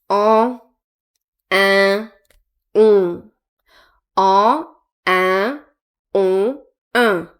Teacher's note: Ça passe par le nez, les voyelles nasales. So, nasal vowels go through your nose.